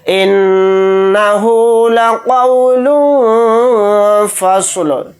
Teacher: نون کے اوپر تشدید ہے تو اس کے اندر غنہ کر کے پڑھیں گے، قاف کو یہاں پر موٹا یعنی پر پڑھیں گے۔